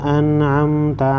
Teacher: नून सेकिन के बाद हुरूफ खल्क़ी में से आइन है, यहाँ पर इज़हार होगा।